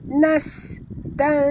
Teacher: bunyikan safir pada sin yang mati